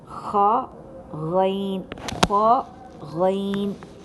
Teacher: ये दोनों की अदायगी अदना हलक से की जाती है। · ख गैन, ख गैन, इन दोनों की अदायगी में थोड़ी सी खरखराहट सी महसूस आपको होगी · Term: ख और गैन